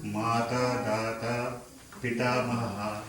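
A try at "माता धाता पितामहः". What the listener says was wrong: Mata dhata pitamaha. Just do that dha with air. Mata dhata.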